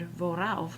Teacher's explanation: the Germans will insert an R to make it flow